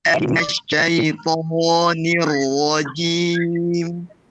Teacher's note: يعني لا نمد الشفتين في حرف الشين